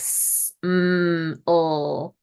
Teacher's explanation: continuance, where the air is impeded but still allowed to flow out of the mouth